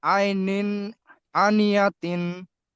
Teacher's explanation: তানবিনের আওয়াজকে বিনা গুণায় জাহির করে পড়তে হবে।